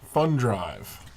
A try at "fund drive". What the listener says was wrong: And every time I hear you read that, I think you say fun drive.